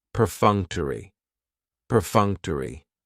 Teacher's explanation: Perfunctory has 4 syllables, and the stress is on that second syllable, that funk, perfunctory. That third syllable has the schwa, and it's going to end with that long E sound, perfunctory, perfunctory.